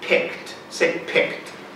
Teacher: one syllable but three distinct consonant sounds right the P the CK and the D although the D really honestly is said more like a t pick we have to be careful with these final consonant sounds